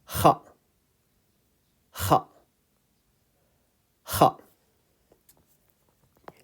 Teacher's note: Kha is coming from the top part of the throat, closer to uvula. Kha. Kha, with your mouth slightly open.